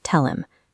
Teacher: To keep the speed up, the H sound is deleted completely.